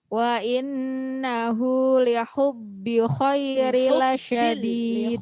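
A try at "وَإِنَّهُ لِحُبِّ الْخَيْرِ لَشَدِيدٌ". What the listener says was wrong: Lihubbil. Di situ ada lam sukun, alif lam sukun, lihubbil. Lamnya hilang.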